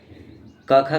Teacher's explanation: क ख ग का बच्चों कंठ से बोला जाता है